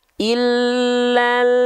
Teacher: Terindikasi pantulannya itu karena ada bunyi vokal e di ujung pelafalan l. Jangan illal. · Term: lam sukun